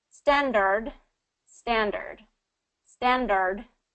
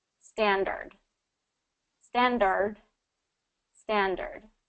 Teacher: the first way I'm going to say a retroflexed r and then the second way I'm going to say the smooth R